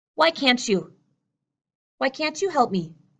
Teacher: that T that T is not released